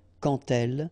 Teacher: So like that, quand elle, all right, same rule here. Remember, when you will have this D, you will phonetically pronounce it like T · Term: liaison